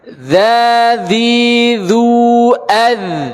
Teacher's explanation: Kita letakkan ujung lidah kita di ujung gigi seri atas. Kemudian sama-sama tidak keluar angin. · Bedanya di poin yang ketiga. Bahasanya dzal tidak mengangkat pangkal lidah